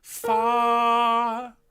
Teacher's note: I'd like it to have one syllable with just a little tuck at the end.